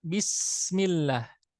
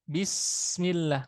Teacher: Huruf sin itu punya sifat rokhwah, mengalir suara. Maka dalam keadaan sukun tetap dibaca mengalir rokhwahnya.